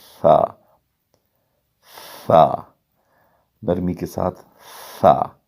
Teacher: نوک زبان ثناء علیہ کے جڑوں میں لگتی ہے تو تا ادا ہوتا ہے باریکی کے ساتھ، تا۔ آگے ثا، ثا بالکل نرمی کے ساتھ بغیر سیٹی نکالے، صاف آواز میں نرمی کے ساتھ